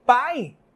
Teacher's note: vogais na mesma sílaba como é que a gente resolve isso o a é a vogal porque tem o som mais forte e esse I que está se apagando que está se perdendo eu vou chamar de semivogal